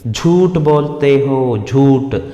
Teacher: ठा महाप्राण, यहाँ झूठ अल्प प्राण नहीं, ठा महाप्राण आना है. झूठ दोनों महाप्राण है.